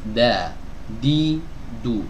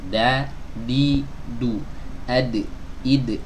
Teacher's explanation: ujung lidah bertemu dengan pangkal gigi seri bagian atas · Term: huruf Dal